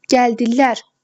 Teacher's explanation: Gəldilər sonuncu hecaya düşür.